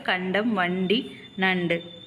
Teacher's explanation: நாவின் நுனி மேல்வாய் அன்னத்தின் நடுப்பகுதியை தொடுவதால் நகரம் பிறக்கிறது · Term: டன்னகரம்